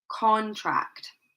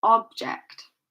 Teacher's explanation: So notice that the stress is placed on the first part of the word.